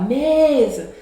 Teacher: a penúltima sílaba, que é o me, ela é mais forte. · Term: sílaba tônica